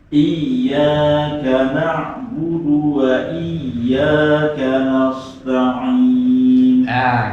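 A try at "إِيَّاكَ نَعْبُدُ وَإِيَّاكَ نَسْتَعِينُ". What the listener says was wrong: Kanasnya sudah mulai oleng nih. Konos, jadi konos. Jadi kanastain semuanya apa? Meringis. Jadi semuanya tipis. Kanastain, jangan sampai jadi konos.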